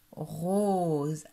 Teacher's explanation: Dans le mot rose, le O se prononce bien O. La bouche fait un rond avec les lèvres.